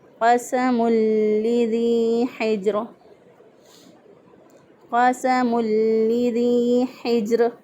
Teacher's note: قاف کو موٹا پڑھا کیونکہ یہ حروف مستعلیہ میں سے ہے